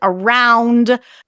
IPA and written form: araʊnd (around)